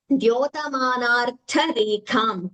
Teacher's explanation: Tha and Tha are Mahapranas.